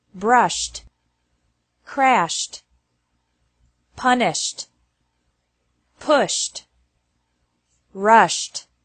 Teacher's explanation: Announced, danced, forced, influenced, introduced, noticed, reduced. ED is pronounced like T after verbs ending with an SH sound